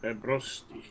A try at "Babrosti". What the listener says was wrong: Yeah, you got to roll your R's.